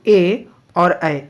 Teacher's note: ए और ए ये कंठ तालव्य है अर्थात ये कंठ तालव्य से बोले जाते हैं